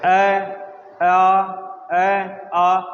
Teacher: ए आ बोल के देखो, आपको पता चलेगा ये कंठ से बोला जा रहा है।